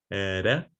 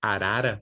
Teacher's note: the tip of your tongue rapidly touching the alveolar ridge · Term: tap or flap